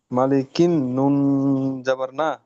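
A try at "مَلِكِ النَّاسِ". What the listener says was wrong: নুনের পাশে আলিফ নেই। নুন আলিফ সিন জাবার নাস, মালিকিন নাস।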